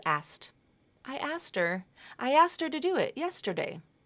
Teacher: my preference the word asked has a s asked SKT so that middle consonant that K is often dropped